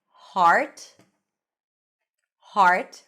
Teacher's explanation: We have the A as in father and then an R sound. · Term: ah as in father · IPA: /ɑ/